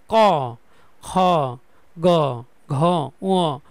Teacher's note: জিহ্বা একদম আমাদের গলা থেকে আসবে জিহববা এখানে কোন তালু দাঁত বা মুর্ধা কোন জায়গায় লাগবে না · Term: কন্ঠ